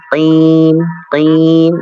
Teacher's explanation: Qaf tebal juga, namun tebal yang paling tipis tapi ya, karena dia berharokat kasrah.